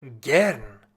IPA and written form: ˈɡɛʁn (gern)